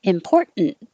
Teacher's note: you can get rid of that first t completely